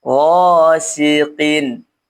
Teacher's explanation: Huruf qf baris di bawah karena huruf qf ini memiliki sifat tebal atau istila'illa ketika dia berbaris ataupun berharakat kasrah maka qof ini dikurangi ketebalannya · Ketika dia berbaris ataupun berharokat kasrah, maka qaf ini dikurangi ketebalannya. Ghasiqin, qin, ya, antara qi dengan ki, ya.